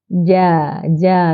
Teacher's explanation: Infitah bermaksud tengah lidah tak menghimpit ke langit sehingga suara dapat dilepaskan dengan lapang dan terbuka.